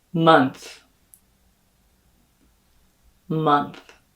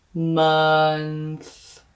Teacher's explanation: that th is not going to have any phonation or buzz here in your vocal folds